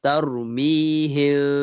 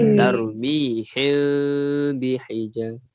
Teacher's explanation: Dia tidak lafazkannya seperti mana idgham bi gunnah, dia tak lafazkan, tak rapat bibir. Kita bacanya tarmihim, ada renggang. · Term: ikhfa syafawi